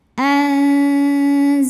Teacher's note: karena ada nun sukun yang menghadapi huruf Zai maka cara bacanya nun sukun ini dibunyikan samar-samar siap-siap menuju makhraj huruf Zai disertai dengung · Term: ikhfa ausat